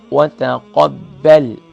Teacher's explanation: با جو ہے لائٹ ہوگا، قاف فل ماؤتھ ہوگی